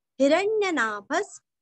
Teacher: हिरण्यनाभस्, ही रस्व भ के आगे विसर्ग का उच्चारण आधा स, हिरण्यनाभस्।